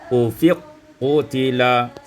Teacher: diidghamkan kaf pada qaf menjadi ufiq qutila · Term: idghamul kaf fil qaf